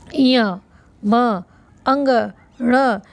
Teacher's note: स्पर्शी व्यंजन के पंचम वर्ण नासिका से बोले जाते हैं